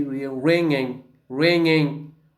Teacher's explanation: The tongue goes up and the vellum goes down. They touch each other. So what happens? The air goes out through the nose. · Remember without ge. So we say ringing, ringing without ge.